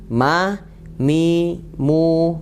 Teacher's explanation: menempelkan kedua bibir dengan lembut disertai gunnah masuk rongga hidung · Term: huruf mim